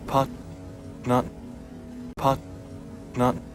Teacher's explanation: here the vowel of part is no longer than the vowel of not